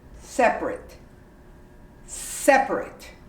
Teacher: this is a long word but you completely omit the a and you say separate separate